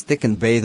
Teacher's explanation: articulated with the tongue against the upper teeth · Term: dental consonant